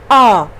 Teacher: पश्च, मतलब पिछले जीभ का पिछला हिस्सा जो है उससे हम आवाज बड़े आ की निकालते हैं। और इसका मुख विवर जो होता है विवृत होता है, विवृत यानी गोला सा, आ आधा गोला आधा फैला हुआ।